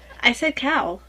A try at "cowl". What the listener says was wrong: Enunciate your L. Well, enunciate your L.